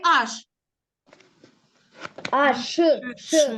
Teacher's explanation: ж чергується з глухою буковкою ш але ми можемо вимовляти як ш але записати потрібно як звук Ж бері з с чуємо але